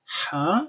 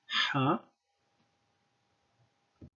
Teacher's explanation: the pharyngeal fricative, which means ha, so like the Arabic ha, like in himar, ha.